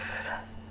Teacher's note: I'm biting my lip and blowing the air.